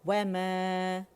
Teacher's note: और यहाँ अलिफ मद्दा बन रहा है, मद तबीई हरकतैन, 2 काउंट के लिए आवाज़ ऊपर जाएगी, मीम की आवाज़ को अलिफ कबीरा, अलिफ ममदूदा ऊपर की तरफ खींच रही